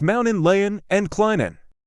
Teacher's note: Native-borns like to leave out the T sound in mountain, Layton, and Clinton